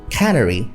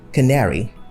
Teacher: Cannery has the stress on the first syllable. Canary has the stress on the second syllable.